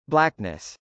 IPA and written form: blˈæknəs (blackness)